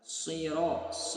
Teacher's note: dengan cara menaikkan punggung lidah ke langit-langit agar suara kita terdengar tebal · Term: huruf shad